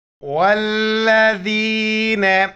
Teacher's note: امزہ کڑا زبر آ میم زبر ما نو و پیش نو آمنوا آمنوا. والذین، واو کو لام کے ساتھ ملائیں گے اور لام کو سختی سے پڑھیں گے